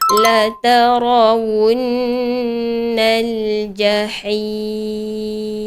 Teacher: apabila jumpa nun bersabdu, perlu didengungkan dengan kadar 2 harakat. Okey, 2 harakat secukupnya.